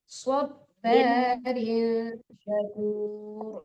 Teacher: Ya, kalau sin tipis, kalau sop tebal.